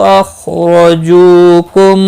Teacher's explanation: حیث خا مستعلیہ، اخرجو اس کو ہلانا نہیں، مستعلیہ ہے، پر پڑھا جائے گا، را زبر کی وجہ سے پر ہوگا